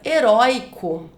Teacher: Entretanto, se eu pensar na palavra heróico, essa palavra era acentuada antigamente, mas não é mais acentuada, porque perceba que se você divide as sílabas da palavra heróico, o oi, né, a sílaba mais forte, ela está ali na penúltima sílaba, então é uma paroxítona